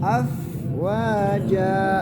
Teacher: Kemudian yang terakhir fa ya. Huruf fa ketika sukun harus dialirkan nafas, dialirkan suara. Jadi jangan langsung putus, hilang.